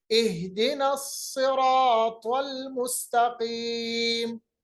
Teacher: इस्तिआला का मतलब होता है मोटा अदा करना, हालांकि जेर है सौद के नीचे फिर भी उसको मोटा पढ़ेंगे